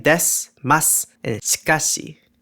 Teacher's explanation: vowel devoicing, where vowels become voiceless and sound pretty much silent, but are pronounced regardless. This can occur whenever the vowels I or U come after a voiceless consonant and before another voiceless consonant or appear at the ends of a word, like in des, mas, and shikashi.